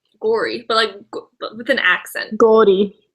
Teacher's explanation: With a tiny little rolled R. That's the only kind of rolled R I can do.